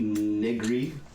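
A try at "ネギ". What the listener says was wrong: gotta be careful with that one. You tried saying it too fast.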